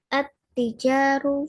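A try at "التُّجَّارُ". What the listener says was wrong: At-tujaru, bukan at-tijaru. At-tujaru. Itu jimnya ada tasdidnya ya, harusnya. Hilang suaranya.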